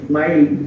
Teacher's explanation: Misalnya ketemu ya, mayanamu man. Aslinya man ketemu ya, jadi mai, nunnya hilang masuk ke ya dengan mendengung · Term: idgham